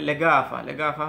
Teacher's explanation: এই কাফটা আবার সৌদিরা দেখা যাচ্ছে গাফ হিসেবে উচ্চারণ করতেছে, আবার গাফটাকে অর্থাৎ গাইনটাকে কাফের মতো উচ্চারণ করতেছে।